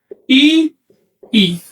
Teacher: estoy intercalando un saltillo entre los dos elementos